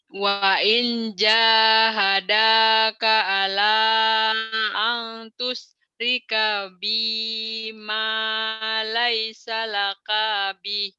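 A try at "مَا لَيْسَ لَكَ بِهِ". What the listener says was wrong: Kayaknya pendek. Dari kemarin itu penyakit kita kenapa jadi panjang ya? Bukan kurang kepanjangan, memanjangkan yang pendek itu salah total. bacanya gini, laisa laka. Emang kayaknya panjang dari mana? Nggak ada yang manjangin. Laisa laka bih. Kayaknya pendek. Dan bukan hanya dari kemarin ini ibu-ibu tuh selalu panjang di situ. Laka, kagok kali ya.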